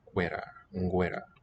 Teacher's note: Labiovelars. They're consonants made with the back of the tongue, but with lip rounding at the same time.